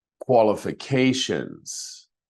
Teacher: This has 5 syllables, and it's the fourth one that's emphasized.